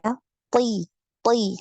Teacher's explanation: karena dia punya sifat isti'la, punya sifat itbaq juga, maka ketika kasrah ini dia tetap tebal ya.